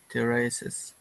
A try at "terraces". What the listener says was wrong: Instead of terraces, we just want to do terraces. So the emphasis is on the first syllable.